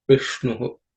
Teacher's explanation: In Vishnu, it's also there are no aspirated consonant, but the ish is a cerebral sh, so the tongue has to be raised. The tip of the tongue should point upwards. You bend the tongue, point it upwards, and say Vishnu.